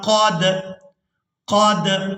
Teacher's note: تو اب یہاں پر دال ساکن ہے تو ہم نے قاف کو دال ساکن کے ساتھ ملانا ہے، تو قلقلہ کے ساتھ ادا کرنا ہے، یعنی دال کو ادا کرتے ہوئے آواز میں جنبش، حرکت پیدا ہوگی